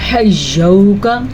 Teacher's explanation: پھر سے واو لین کو لمبا نہیں کر سکتے، یعنی کہ حجوکا یہ نہیں پڑھ سکتے.